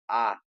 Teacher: और आ का क्या है, ओष्ठ नहीं है, कंठ वाला है। आ कंठ से होता है।